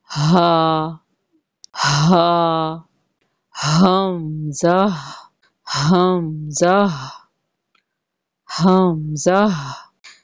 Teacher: हलक का आखरी हिस्सा जो सीने के करीब है उसको अक्सा हलक भी कहते हैं वहां से हा और हमजा अदा होते हैं इसको हमदा करेंगे हलक का आखरी हिस्सा हा भारी इसको पढ़ेंगे